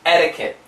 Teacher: it's that flap T which sounds like a D